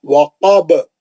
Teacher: باپے زبر تھا، ہم روکنے کے لیے جزم لگائے، خلخل کبرا ہو گیا